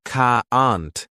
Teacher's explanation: British people say can't like cahant, but Americans say caant with a strong a sound.